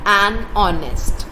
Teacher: H in the beginning of honest is silent